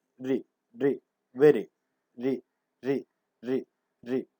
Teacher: For once, the active articulator strikes against the passive articulator. Then quickly flaps forward. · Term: Taps or flaps